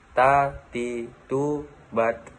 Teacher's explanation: Ada juga huruf hijaiyah ta. Melafalkannya dengan menyentuh ujung lidah dengan gusi gigi seri bagian atas, dengan melafalkan sedikit napas.